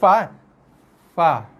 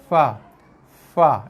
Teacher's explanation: Gigi atas sentuh bibir bawah, sentuh lembut, buka keluar hembusan nafas kan. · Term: huruf fa